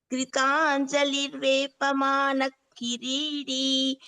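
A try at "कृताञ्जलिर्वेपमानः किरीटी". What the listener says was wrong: Actually here, giridi, no, kiriti, ta. And ha should be heard. Kritanjalirvepamana kiriti.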